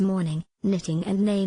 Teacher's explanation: the Air Stream is allowed to flow out through the nose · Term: nasals